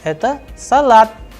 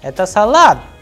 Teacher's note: the pitch of the sound at the end of the sentence is going higher, whereas when I am answering, initially after the it is having a pause and then it is a flat sound.